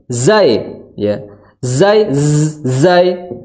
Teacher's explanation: Menyentuhkan dengan gigi seri bawah. Jadi memunculkan sifat sofir atau desisan suara